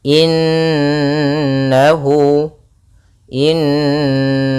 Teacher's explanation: Kemudian pada lafal innahu, di sini ada bacaan gunnah berupa huruf mim yang ditasydidkan dan diwarnai dengan warna hijau, yang artinya nunnya harus ditahan dulu suara n-nya